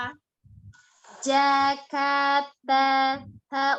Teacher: ujung lidah ada di pangkal gigi seri atas